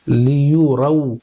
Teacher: वाव को अदा करते वक्त यहां पर दोनों होठों को गोल करेंगे अच्छे से · یہاں پر دیکھیے را واو زبر رو ہے, لیو رو. واو کو ادا کرتے وقت یہاں پر دونوں ہونٹوں کو گول کریں گے اچھے سے, لیو رو, اور کھینچیں گے نہیں.